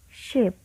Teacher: It is sounds in which there is a constriction between the blade of the tongue and the palatoalveolar or post-alveolar region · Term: palatoalveolar sounds